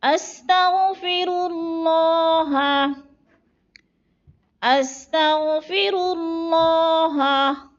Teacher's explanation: را کو پر پڑھنا ہے اور اللہ کو بھی پر پڑھنا ہے